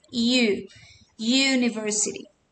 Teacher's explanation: esta u va a tener sonido de consonante porque va a sonar como una y